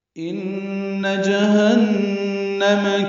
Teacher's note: ان میں نون مشدد ہے، اس میں غنہ ہے